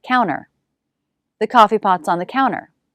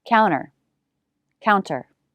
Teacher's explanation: some americans drop the t after n